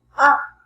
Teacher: You have to lower your voice. It's falling tone.